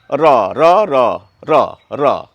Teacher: এই র বলতে গিয়ে আমাদের জীবটি কোথায় ঠেকছে দাঁত এবং দন্তমূল যেখানে শুরু হচ্ছে ঠিক সেই জায়গায় র র জীবটি কিভাবে এভাবে কাঁপে র এই বর্ণটি আমরা সকলেই